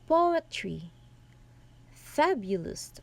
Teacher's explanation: Our word examples here are poetry and fabulous, and the stressed are in the first syllables and the two remaining syllables are unstressed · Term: ductil, dactyl